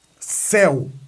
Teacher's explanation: o E é forte, o U não. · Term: semivogal